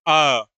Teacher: तो जब हम आ का उच्चारण करते हैं अ, तो ऐसा लगता है कि ये जीभ के कौन से भाग से आ रहा है, मध्य भाग से आ रहा है अ। तो क्या हो गया, ये मध्य स्वर हो गया।